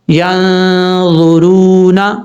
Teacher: ایک الف کی مقدار اس کو لمبا کر کے پڑھیں گے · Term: واو مدہ